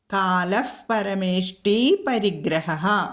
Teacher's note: കാലഹ കഴിഞ്ഞിട്ട് പരമേഷ്ടി വന്നു. വിസർഗം കഴിഞ്ഞിട്ട് പാ വന്നതുകൊണ്ട് അവിടെ ഉപദ്മാനീയം വന്നു. അവിടെ ഫ ചൊല്ലണം.